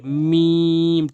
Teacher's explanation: দুই ঠোটের শুকন অংশ দুই ঠোট বন্ধ করে